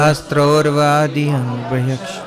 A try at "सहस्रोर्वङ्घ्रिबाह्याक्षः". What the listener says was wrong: सहस्रोर्वङ्घ्रिबाह्याक्षः सहस्रानन शीर्षवान्. अरे अधी नहीं है भाई, अधी नहीं है, अंग्रेजी. सहस्रोर्वङ्घ्रिबाह्याक्षः सहस्रानन शीर्षवान्.